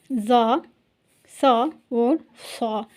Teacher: زبان کی نوک کو نیچے والے جو 2 دانت ہیں ان کے کنارے کے ساتھ لگایا ، یعنی نیچے والے کنارے کے ساتھ جو زبان کی جو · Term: سیٹی کی آواز